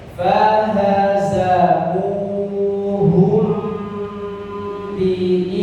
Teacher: diperhatikan dengungnya mim sukun bertemu ba didengungkan